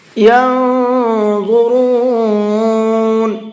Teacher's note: نون کے اندر اخفا کریں گے، آواز کو تھوڑا سا ناک میں چھپا کر کے پڑھیں گے